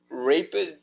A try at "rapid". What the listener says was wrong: be very careful with this word, okay? It's rapid. You said rape it.